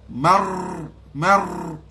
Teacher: bila mar lidah kita duduk main di langit tak rapat. Bila tekan rapat marrabbus marrabbus.